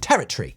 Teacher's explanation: the Tory kind of disappears at the end